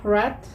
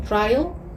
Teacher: these sounds involve the contact between the tip of the tongue against the back of the alveolar ridge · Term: postalveolar sounds